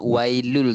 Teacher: Idgham memasukkan tapi tak dengung. Tu kita bacanya wailul terus. Tak ada wailun likul, bukan wailun, dia wailul.